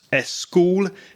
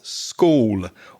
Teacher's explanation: Spanish often puts an extra vowel sound to break up or divide the consonant cluster. So for this reason, you may hear a Spanish speaker pronounce es school instead of school.